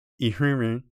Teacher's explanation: once again we don't have n sounds here just nasal vowels